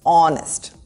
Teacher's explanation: honest has a silent H and the first sound is O